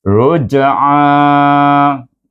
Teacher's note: Ra baris depan itu digabungkan dengan jim bunyi ruj dengan qalqalah segera. Ruj'a. Dua harakat saja mad asli.